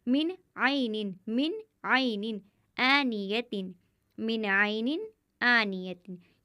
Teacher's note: गुन्ना नहीं करेंगे, यानी आवाज़ को नाक में नहीं ले जाएंगे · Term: इजहार